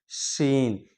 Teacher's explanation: زبان کا بیچ والا حصہ جب اوپر تالوں میں جا کر ٹکراتا ہے، پھر جا کر یہ ادا ہوتا ہے